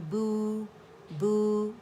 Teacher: 2 counts کے لیے آواز ہماری گول ہو جائے گی, لپس کی موومنٹ سے ہوگی ہماری, وہ ہم اسے رول کریں گے, کمپلیٹلی رول ہو جائیں گے ہمارے لپس. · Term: واو مدہ